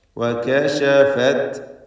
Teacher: വകശഫത് എല്ലാ അക്ഷരങ്ങളും ഇസ്തിഫാലിൻ്റേതാണ്, തർക്കീഖ് ചെയ്യേണ്ടവയാണ്.